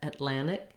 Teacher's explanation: second syllable stress with the clear ah in the land we have that first short reduced uh a vowel and and